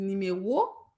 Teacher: on va coller, joindre ces deux voyelles avec une demi-voyelle